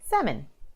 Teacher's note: so people might say Salman with the L in the middle but you omit the L and you say salmon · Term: silent l, silent L